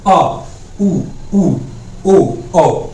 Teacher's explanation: जीभ के पिछले भाग में कंपन होता है, जीभ का पिछला भाग प्रयोग किया जाता है, उसको क्या कहते हैं, हम पश्च स्वर कहते हैं